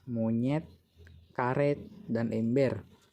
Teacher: direalisasikan sebagai bunyi E tengah bawah tak bundar depan apabila berada pada silabel tertutup seperti pada kata monyet, karet, dan ember.